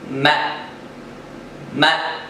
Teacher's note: دونوں ہونٹوں کے باہری حصے کو ملانے سے میم ادا ہوتا ہے